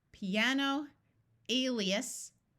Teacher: here are some words with i a in the middle rather than at the end where the I has a clear long e sound